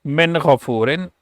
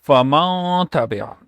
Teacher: you hide the Nun sound, you take sound in nose for a second or so, like Faman, and also you stretch a sound a little bit, and that is called Ghunna, like Faman Tabia. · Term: Ikhfa